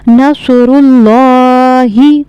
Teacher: अल्लाह का लाम जो है इसको हमें मोटा करके यानी पुर करके पढ़ना है, क्योंकि लफ्ज़ अल्लाह के लाम से पहले पेश है।